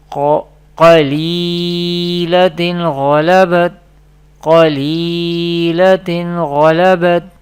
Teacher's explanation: Next example of izhar is, first we spell qaf zabar qa, lam ya zer li, qali, lam zabar la, qalila, ta do zer tin, qalilatin, ghain zabar gha, lam zabar la, ghala, ba ta zabar bat, ghalabat. Here izhar rule will happening here because there is ghain, halka letter comes after tanween. This is two zer, this is tanween, and this is zer before ya sakin, this is ya madda.